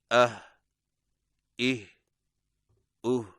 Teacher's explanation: हा हलक में बगैर दबा हुआ सांस। अदायगी के वक्त जुबान की जड़ को हलक की तरफ दबाए बगैर अदा करें।